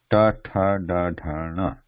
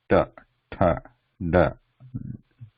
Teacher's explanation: tip of the tongue slightly curved backwards, pressing the cerebral position in the mouth